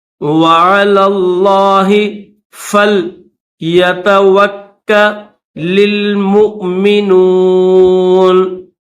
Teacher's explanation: یہ لام ہے آئین کے بعد، اس آئین کے بعد یہ جو لام ہے اس لام کو لفظ اللہ کے ساتھ ملا کر پڑھیں گے اور لفظ اللہ کو موٹا کریں گے